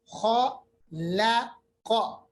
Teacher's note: دیکھیں خا کو پر پڑھیں گے، خا لا قا. دیکھیں خا اور قاف کو پر پڑھیں گے، لام کو باریک پڑھنا ہے. دیکھیں کیسے پڑھنا ہے، خا لا قا، ایسے نہیں پڑھنا. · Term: حروف مستعلیہ